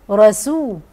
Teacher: رسول من الله، خلي بالي من ترقيق السين واقول رسول